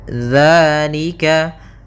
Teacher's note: Di sini ada hukum tajwid berupa mad tabi'i, yaitu adanya fathah bertemu dengan alif. Maka kita panjangkan 2 harakat.